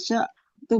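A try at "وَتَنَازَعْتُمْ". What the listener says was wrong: Wa, bukan fa. Wa tanaza'tum.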